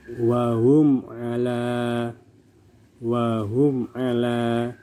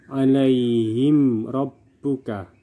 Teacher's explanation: Mim sukun di sini bertemu dengan ain, maka dibaca jelas tanpa dengung. Mim sukun bertemu semua huruf selain huruf ba dan mim, dan di sini bertemu dengan ain, maka dibaca jelas tanpa dengung. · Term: izhar syafawi